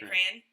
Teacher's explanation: there are lots of americans who say crayon one vowel